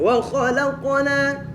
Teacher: Jadi qaf mati itu qalqalahnya jadi kayak hidup.